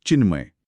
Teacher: त च्या पुढे म आल्यामुळे त च्या जागी त वर्गातील न हे अनुनासिक नैसर्गिक रित्या येतं